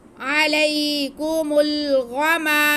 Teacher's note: गौइन को मोटा करके पढ़ेंगे, थोड़ा मुंह गोल करके अदा करेंगे तो अच्छा अदा हो जाएगा। गौइन हुरूफ मुस्तालिया में से है।